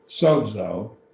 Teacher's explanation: so it has two syllables sodzo zeta the zeta your teeth it's a dental your teeth almost vibrate when you say it